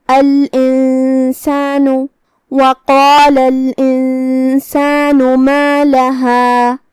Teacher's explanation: یہاں حکم ہے اخفاء، جو کہ اخفاء کا معنی ہے چھپا دینا، تو ہم نون کو بغیر ظاہر کیے ہوئے لیکن غنہ کے ساتھ یہ حکم کو ادا کریں گے